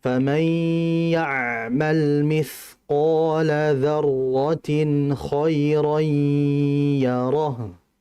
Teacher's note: Artinya idgham itu kan berarti memasukkan dari huruf pertama huruf kedua. Bi gunnah disertai dengan gunnah, dan gunnah di sini merupakan gunnah yang sempurna yang harus kita tahan terlebih dahulu. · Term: idgham bi gunnah